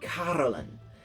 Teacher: really lean into that r and they'd lean into that first syllable so it would be caroline even a stronger r than that